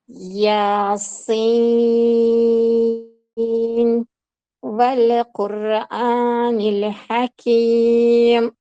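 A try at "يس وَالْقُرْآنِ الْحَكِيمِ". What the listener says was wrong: Mana shu yerda v Quran deb turib lamlarizni sakratib qo'yapsizda.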